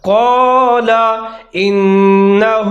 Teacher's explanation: نون مشدد ہے حروف یرملون کا، یہاں پر ادغام کریں گے غننے کے ساتھ۔